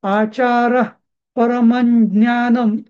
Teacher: परम अनुस्वाराचा म केलो पुढे आचार परम ज्ञानम केला मी कारण समोर ज्ञ आलेला आहे